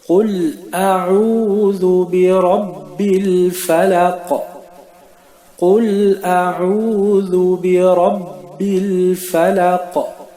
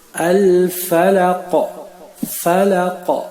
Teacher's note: nous avons appliqué un son de résonance dans la dernière lettre, c'est-à-dire le qaf. Le qaf fait partie des 5 lettres qu'on appelle les 5 lettres de qalqala.